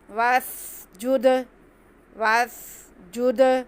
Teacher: सीन सिटी से अदा करेंगे, और दाल साकिन इस पर कलकला करेंगे।